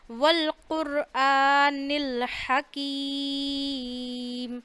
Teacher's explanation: حکیم میں یہ ہا ہے جو گلے کے درمیان والے حصے سے ادا ہوتا ہے، یعنی تھوڑا سا منہ اوپر کریں گے تو گلے کی ہڈی شروع ہو رہی ہے، ٹھیک ہے؟